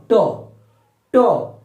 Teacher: तो जैसे ही आप बोलकर देखेंगे ना ट, ठ, ड, तो जीभ कहां स्पर्श करेगी? तो दांत के अंदर मसूड़े के ऊपर, अर्थात तालु का अगला भाग। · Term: मूर्धा